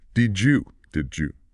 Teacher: That D sound from did meeting the Y sound in you often creates a J sound. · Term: palatalization